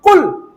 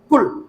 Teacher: قل کہاں سے نکلے گا؟ زبان کی جڑ تالو کے نرم حصے سے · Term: قاف